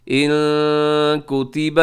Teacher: نون ساکن کے بعد کاف ہے، یہاں اخفا کیجیے گا